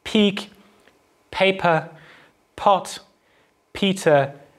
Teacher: of english voiceless again meaning where the vocal folds don't vibrate so the first thing that we're looking at is a voiceless bilabial plosive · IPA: [pʰiːk] [pʰeɪ.pə] [pʰɒt] [pʰiːtə]